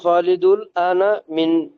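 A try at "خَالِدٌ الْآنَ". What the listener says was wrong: খালিদুনিল আনা, হ্যাঁ খালিদুল আনা না, খালিদুনিল। খালিদুন এখানে নুন আছে না, তাহলে নুন মানে সাকিন, এখানে সাকিন আছে, সমস্ত তানবিন এখানে সাকিন মনে করেন। এটা মিলাই পড়তে হলে খালিদুনিল আনা, ঠিক আছে?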